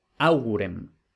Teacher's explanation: la U, que es la penúltima, no tiene macrón, por tanto no es larga, no va acentuada